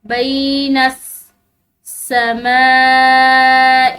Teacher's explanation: سین مشدد تو نون کے ساتھ ملا کر پڑھا جائے گا. بینس سماء، یہاں پر بڑی مد کی وجہ سے اس کو کھینچ کر پڑھا جائے گا.